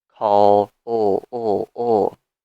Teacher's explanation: the final sound of the infinitive call is a sound with vibration call oh all you can feel the vibration so then we